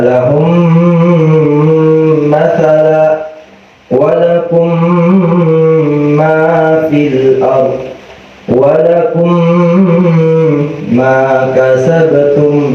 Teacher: Idgham mutamathilaini apabila ada huruf mim bertemu dengan huruf mim. Huruf mim mati bertemu dengan huruf mim yang hidup, itu namanya idgham mutamathilaini atau idgham mimi.